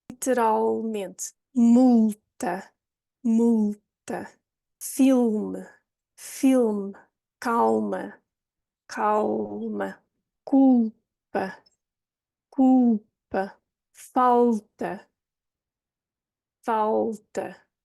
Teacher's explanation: Now, the tip of the tongue can still touch the roof of the mouth just before the top teeth, but the difference here is that the tongue does not release, and it feels as if the tongue is receding further into your mouth, into your throat almost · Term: dark L